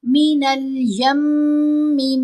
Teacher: یا کو میم سے ملاتے ہوئے یم آواز ناک میں پڑی جاتی ہے اور 2 حرکات کی مقدار آواز کو لمبا کیا جاتا ہے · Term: غنہ اصل